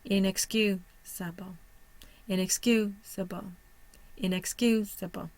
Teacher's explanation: Where is my primary stress? On the third syllable. My secondary stress is on the first.